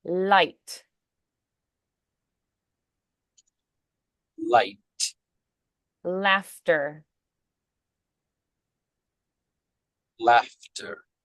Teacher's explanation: it's considered a lateral consonant um because the air flows around the sides of the tongue